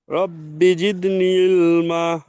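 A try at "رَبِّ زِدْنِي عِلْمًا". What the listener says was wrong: রব্বি জিদ, এই যে জিদনি এখানে একটুকুনা টান হবে, জিদনি। রব্বি জিদনি ইলমা।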